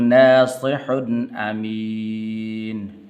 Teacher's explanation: اور یہاں پر غنہ نہیں کرنا کیونکہ آگے حمزہ حروف حلقی میں سے ہے